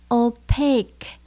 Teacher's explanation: Ở trong từ này chúng ta nhấn âm số 2 nhé. Opaque. Mình lưu ý có từ cuối cùng là chữ Q-U-E.